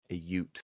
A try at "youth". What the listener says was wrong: Youth, not a Ute. youth. Youth. There's a H on the end. Youth. youth.